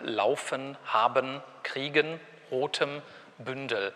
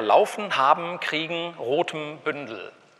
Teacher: Was Sie nämlich hier haben, sind sogenannte silbische Nasale und Liquiden.